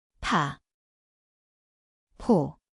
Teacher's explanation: Sounds like p, it is an aspirated, with a strong puff of air.